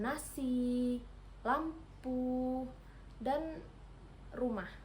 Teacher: apiko alveolar ini terjadi ketika ujung lidah menyentuh langit-langit langit-langit kas maaf langit-langit keras di bagian depan sini.